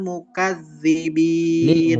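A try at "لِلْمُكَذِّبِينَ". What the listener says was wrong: muka lebih tipis ka.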